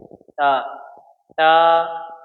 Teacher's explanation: تا زبان کی نوک اور اوپر کے دانت جو بچپنے میں پہلے نکلتے ہیں سب سے پہلے اس کو ہم ثناء اولیاء کہتے ہیں. اس کی جڑ سے تا ادا ہوتا ہے.